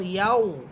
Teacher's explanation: ইয়া ওয়াওকে ধরে ফেলবে এবং ঠোঁট গুল করে পড়বেন।